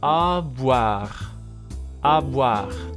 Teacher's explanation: the combination O-I becomes wa, as it always does